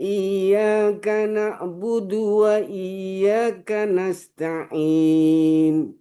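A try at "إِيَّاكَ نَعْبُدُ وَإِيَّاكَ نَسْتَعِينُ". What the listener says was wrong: Kaf dengan nun jangan terlalu cepat. Iyyaka na'budu wa iyyaka nasta'in. Wa iyyaka nasta'in. Iyyaka na'budu wa iyyaka nasta'in.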